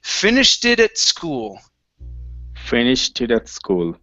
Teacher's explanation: you have an ed ending that sounds like a T, and then the word it.